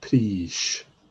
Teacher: So long I and a slender S.